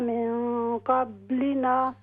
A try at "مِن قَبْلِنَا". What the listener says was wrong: ہاں جی، با پر قلقلہ ہوگا، قبلنا،